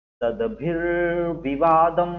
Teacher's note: यहाँ भी जो विसर्ग है सद्भिः के बाद वो आगे जाके रा बन गया